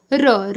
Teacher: लुंठित व्यंजन जिसके उच्चारण में जीभ तालू से लुड़क कर स्पर्श करे